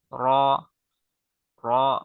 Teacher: জিহবার আগার পিঠ তার বরাবর উপরের তালের সঙ্গে লাইগা র র মোটা করে একদম বোল্ড করে পড়তে হবে র আচ্ছা